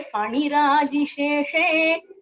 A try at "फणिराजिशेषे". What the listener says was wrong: pa, ha. It is not F sound. It is pa, ha.